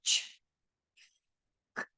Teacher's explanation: the sound is produced just by that air flow in your mouth and there isn't any voicing behind it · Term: voiceless consonant